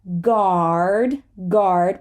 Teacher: please say the r we're not British